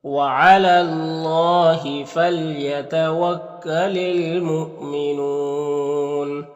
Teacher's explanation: یہاں پر الف لام حروف قمری میم کے شروع میں تو لام کو پڑھیں گے، الف کو نہیں پڑھیں گے۔ یہاں پر حمزہ ساکنہ ہے واو کی شکل میں تو جھٹکا لگے گا، اور یہاں پر وقف کریں گے تو مد عارض وقفی ہوگا، تو اس طرح سے پڑھیں گے۔